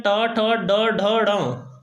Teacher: जीभ मुड़ती है तो ये मूर्धन्य हो गए।